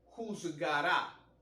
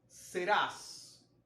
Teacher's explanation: la mayor fuerza de acentuación recae sobre la última sílaba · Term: palabra aguda